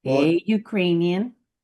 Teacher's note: Ukrainian makes the U sound which does not sound like a vowel. Sounds like the consonant Y.